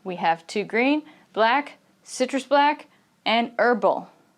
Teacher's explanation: each of these different kinds of tea, the intonation is going to kind of go up